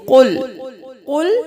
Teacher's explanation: قل کا قاف موٹا پڑھیں گے، کل نہیں کریں گے